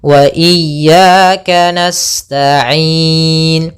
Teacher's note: na'budu na'budu maka iyyaka na'budu wa iyaka sama di sini wa iyaka nasta' kemudian pada lafal ya pada lafal ya yang pertama ada mad thabi'i yaitu fathah bertemu dengan alif kemudian yang kedua sama juga ada mad thabi'i yaitu fathah bertemu alif panjangnya dua harakat maka panjang ya yang pertama dan yang kedua harus sama jangan Beda dengan iyyaka na'budu wa iyaka nasta'in.